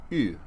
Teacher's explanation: is Upsilon and it's pronounced as I said something like you kind of a u sound with the lips pursed a bit